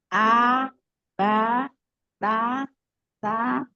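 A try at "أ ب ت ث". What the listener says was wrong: jangan di enggak. Dia satu ketukan. A, ba, ta, ta. Jangan diseret.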